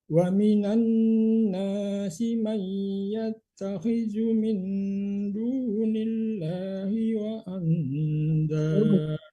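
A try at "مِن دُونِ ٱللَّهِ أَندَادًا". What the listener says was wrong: Jangan tak pakai wa ya. Min dunillahi. Enggak pakai waan ya, tadi ditambah dengan waw.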